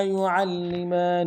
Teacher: يعلمان میں عین کو موٹا کرتے ہوئے لام کے ساتھ ملانا ہے، لام کے اوپر تشدید زور دیں گے اور اگلے میم کے اوپر کھڑا زبر ہے ایک انداز میں کھینچیں گے.